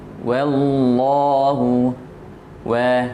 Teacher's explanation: Nah, jadi kita manyunkan bibir kita. Ketika kita menyebutkan huruf waw, posisi mulut kita itu keadaannya dalam keadaan manyun. Nah, jadi bibir kita bertemu di depan, kemudian tapi tidak merapat. Au, wa, seperti menyebutkan huruf harakat dhammah.